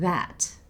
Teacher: she stops herself just before she makes the 't' sound at the end of 'that'